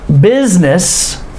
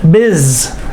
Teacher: notice business the s has the z sound